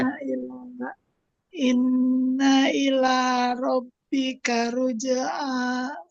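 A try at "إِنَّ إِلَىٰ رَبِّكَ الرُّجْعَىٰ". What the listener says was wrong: Masih belum. K-nya dengan ro di situ yang ditahan. Jadi semuanya ini satu ketukan. Inna ila. Dua harokat. Inna ila rabbikar. Kar. Baru ditahan lagi. Rabbikar ruj'a.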